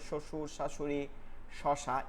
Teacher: জিব্বার মধ্যখান তালুতে লাগে, জিমের মাখরাজি একই মাখরাজ, বাতাস বের হয় মধ্যখানটা লেগে